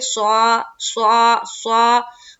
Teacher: स्वाद को मुंह भर कर कहेंगे, स्वा स्वा स्वा, और आइन निकालने की कोशिश करेंगे।